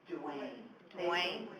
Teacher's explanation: The triphthong in my first name does not occur in Spanish. Nobody can say Duane so they say Dwen.